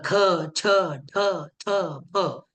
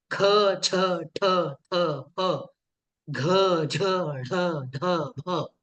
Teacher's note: ज्यांचं उच्चारण करण्यासाठी शक्ती जास्त लागते म्हणजेच हकाराचे प्राबल्य त्या वर्णांच्या उच्चारणामध्ये जास्त असते. जसं ख छ ठ थ फ. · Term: महाप्राण